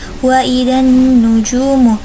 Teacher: nunnya yaitu bacaan gunna karena nunnya bertasdid dan dibaca dengung